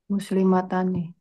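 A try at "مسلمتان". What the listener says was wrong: Muslimatani. Ahsante.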